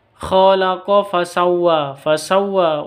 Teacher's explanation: fasawwa wa dibaca panjang karena ada alif layyinah di sini. Ini seperti ya alif, ini namanya alif layyinah, atau karena ada fathah berdiri seperti ini.